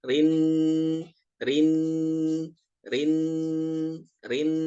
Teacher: Ini ada dengung, ada gunnah musyaddadah. Ditahan 2 sampai 3 harokat.